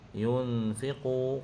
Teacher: qaf huruf isti'la kena tebalkan, beserta mad asli dibaca 2 harakat.